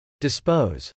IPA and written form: dɪspˈoʊz (dispose)